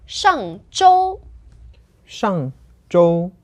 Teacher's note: So it's fourth tone and first tone.